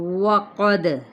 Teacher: واو ہونٹ گول کر لیں، اس کو وی یعنی ثنایا اولیہ جو ہے وہ نیچے مت لگے، صرف ہونٹ گول ہونے چاہیے، صرف اور صرف ہونٹ گول۔